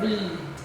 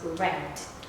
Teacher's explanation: That is the present form. But when we read it into the past form, it becomes read. Okay, so it becomes shorter.